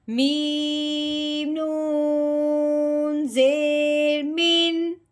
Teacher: اب نون ساکن ہے، اس کے بعد ہم نے ہاں دیکھا ہے تو ہاں حروف ہلکی میں سے ہے، اس لیے اب ہم نے نون ساکن پہ غنہ نہیں کرنا، بغیر غنے کے اظہار کے ساتھ پڑھنا ہے